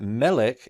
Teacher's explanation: Melech is accented on the first syllable